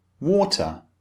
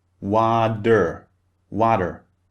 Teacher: the T sound is very clear and distinct